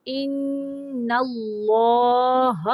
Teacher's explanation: اللہ اصطفاکی، ان پہ نون مشدد کا غنہ ہوگا، ان اللہ، اللہ کا نام موٹا پڑھنا ہے